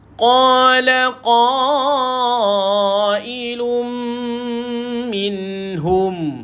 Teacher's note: idgham maal ghunnah memasukkan dengan dengung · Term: dengung masuk